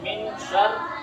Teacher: دیکھو اخفا کیوں ہوگا؟ اس لیے کہ نون ساکن کے بعد حروف اخفا کے 15 حرفوں میں سے شین آیا ہے، اس لیے اخفا ہوگا، اور را باریک اس لیے ہوگی کہ را کے نیچے زیر آیا ہے۔